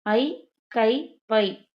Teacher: தனித்து வரும் இடங்களில் தனக்குரிய இரண்டு மாத்திரை அளவில் முழுமையாக ஒலிக்கும் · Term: ஐகாரக் குறுக்கம்